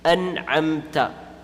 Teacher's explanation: Ayn is a throat letter from the middle portion of the throat. And since it's a throat letter, the noon will be pronounced fully, and there's going to be no ghunnah.